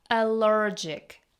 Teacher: here we have the vowel like in bird or word. Roll your lips and say allergic.